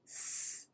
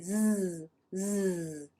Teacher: if I say s, it's unvoiced because I don't feel anything on my fingers. I don't feel the vibration.